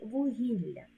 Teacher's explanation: позначатися двома однаковими буквами у слові вугілля дві букви л а звук один ль він подовжений м'який